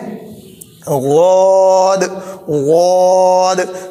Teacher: ज़ुबान का किनारा दाढ़ की जड़ में लगाएंगे और इसको भी मोटा पढ़ेंगे, गौद, यानी इन पे चाहे ज़बर हो, ज़ेर हो, पेश हो, इनको हम क्या है मोटा पढ़ेंगे।